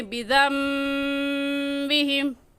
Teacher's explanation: نون ساکن کے بعد با آ جائے تو وہ دونوں میم بن جاتے ہیں اور وہاں غنہ بھی ہوتا ہے. تو یہاں پر بھی ہم بذنبہم نہیں پڑھیں گے بلکہ میم پڑھیں بذنبہم.